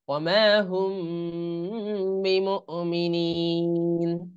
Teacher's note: মিম সাকিনের পরে যদি বা আসে তাহলে সেটা গুন্নাহ সহকারে ইখফা করে পড়তে হয়